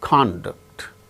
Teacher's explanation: the first syllable gains stress when it is used as noun